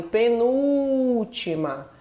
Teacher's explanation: penúltima, é essa sílaba nu que eu falo com mais demora. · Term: sílaba mais tônica